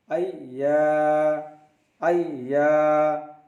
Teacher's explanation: Ya is pronounced from the middle of the tongue and the middle of the palate